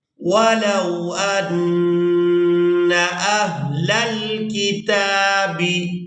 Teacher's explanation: نون مشدد پر غنہ کریں گے، آواز کو ناک کے بانسے سے ادا کریں گے